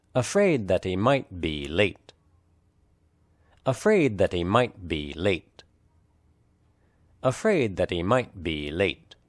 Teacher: the emphasized content words are afraid might and late in other words that he and b are unstressed spoken lightly